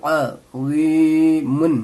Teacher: عظیمن، عظیمن، اس وا کو موٹی کر کے پڑھیں گے، اور اس عین کو، یہ حروف حلقی میں سے ہے، اس کو حلق سے ادا کیا جائے گا، جیسے کہ عظیمن، میم دو پیش من۔